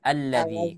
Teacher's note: Bukan lagi di sana disebutkan ya munculnya nun wiqayah, tidak lagi. Nun wiqayahnya hilang kalau kita waqaf. Jadi bukan nilazi ya. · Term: hamzah wasol